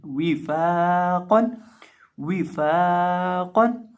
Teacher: वाव को होंठों को गोल करके पढ़ा जाता है। और फ़ा को एक अलिफ के बराबर लंबा करके पढ़ेंगे और कौफ को मोटा करेंगे। ये मोटे हरूफ में से है।